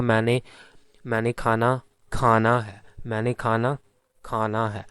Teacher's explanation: मैं क्या कर रहा हूँ कि जो दूसरा खाना है जो एज अ वर्ब है, उसमें खा पर जो है मैं ज़्यादा स्ट्रेस दे रहा हूँ। मैं क्या कह रहा हूँ, मैंने खाना खाना है, मैंने खाना खाना है, और इसमें आमतौर पर मुझे सेकंड सिलेबल पर स्ट्रेस फील हो रही है।